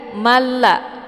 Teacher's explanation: Maka ini hukum bacaannya adalah idgham bila ghunah. Jadi cara bacanya di sini tanwinnya kita masukkan ke dalam huruf lam dengan cara ditekan tapi tidak ditahan.